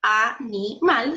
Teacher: Ahí está separado en sílabas, ¿cierto? Cargo la voz en la sílaba mal.